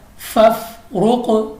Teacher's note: قاف چونکہ کلکلا ہے تو ہم اس کو واپس نکلتی ہوئی آواز یعنی لوٹتی آواز سے پڑھیں گے، جنبش کی آواز سے پڑھیں گے، اپنے ہمارے مخرج میں جنبش سی ہوگی۔